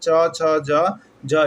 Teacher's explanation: च, छ, ज, ज। इस सभी का उच्चारण तालु से होगा, तालु व्यंजन है या तालव्य व्यंजन इसको हम लोग कहेंगे।